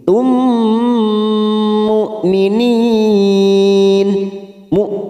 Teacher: mim sukun bertemu mim idgham mimi, kita tekan selama 3 ketuk, siap masuk ke huruf mim